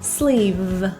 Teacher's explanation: Sleeve has a voiced V sound, so feel the vibration.